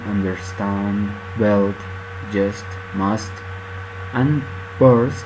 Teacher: the elision of final D or T when it is preceded by consonants.